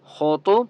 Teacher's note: خا اور طوا کو دونوں مستعلے میں سے دونوں کو آپ نے موٹا پڑھنا ہے